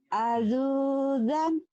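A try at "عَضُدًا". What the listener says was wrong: Nggak ada yang panjang. Adudan.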